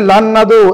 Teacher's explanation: এই নুনটা না হয়ে পরের নুনের সঙ্গে পড়তে হবে।